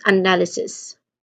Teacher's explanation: So the second syllable, it carries the primary stress. The is a short sound, as in cut, and then followed by an n sound, and l sound.